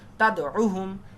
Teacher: তাদ ধাক্কা হবে কিন্তু টান হবে না তাড়াতাড়ি